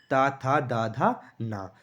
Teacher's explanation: जीभ हमारी दांतों से टच होती है इसलिए इसे दंत व्यंजन कहते हैं · इसमें सब में आपकी जो जीभ है वो दांतों से टच हो रही है दोस्तों